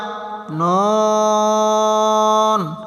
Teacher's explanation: জিহ্বার আগা তার বরাবর উপরের তালুর সঙ্গে লাগাইয়া নুন